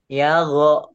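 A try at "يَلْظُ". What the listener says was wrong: yaldo, do biasa. Walau do, yaldo. Yaldo. Doanya belum bulat tuh ya.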